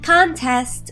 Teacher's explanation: Contest, with the first syllable stressed, is a noun. It means a competition.